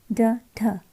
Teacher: इसके उच्चारण में जीभ ऊपर उठकर झटके के साथ नीचे गिरती है, तो उसको हम जो है उत्क्षिप्त कहते हैं, ठीक है।